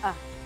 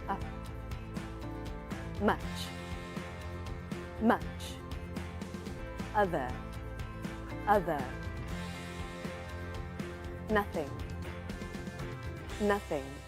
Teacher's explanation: my tongue is lifted a little bit and pulled to the back my lips are relaxed and I make the sound short and relaxed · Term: short vowel sound